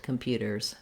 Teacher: when we add the S to make it plural, we have the Z sound at the end